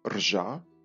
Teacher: І давньоруське або давньоукраїнське слово для іржи звучало як «рожа». Пізніше «єр», тобто звук «ө» після «р» випав, стало «ржа». І оскільки на початку слова в українській мові важко вимовити «рж» разом, до нього було додано протетичний так званий голосний «і».